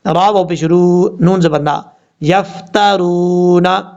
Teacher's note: یفترون، یا کو فا سے ملائیں گے، یا فا زبر یف، تا زبر تا، را کو واو سے ملائیں گے اور جب را کو واو سے ملائیں گے تو ایک الف کی مقدار لمبا کر کے پڑھا جائے گا. را کے اوپر پیش ہے، را کے اوپر پڑھیں گے، را واو پیش رو، نون زبر نا، یفترون.